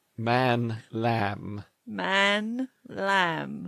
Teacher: Lips are closed. Sound flows through the nose. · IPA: /m/